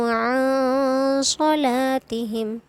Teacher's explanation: अन में हमें नून को नाक में छुपाना है